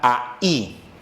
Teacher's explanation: ahí suena más la I, que es vocal cerrada